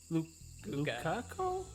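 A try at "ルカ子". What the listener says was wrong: They pronounce L's as R's.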